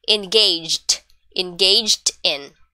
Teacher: since it's in past tense instead of pronouncing it in three syllable try to do it in just two